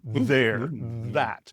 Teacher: So if you think of a word like there or that, you can feel, if you touch your throat, you can feel the vibration of the vocal cords vibrating with there, that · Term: voiced th, voiced TH